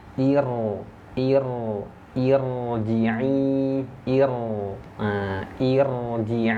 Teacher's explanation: Nah mati setelah Hamzah wasal ya dibaca tebal